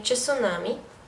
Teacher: inserção de vogal epentética, como em tsunami